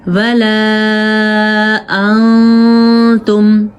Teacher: ہلکی آواز نون کی آنی چاہیے لیکن تھوڑی سی چھپانی ہے آپ نے بس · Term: اخفا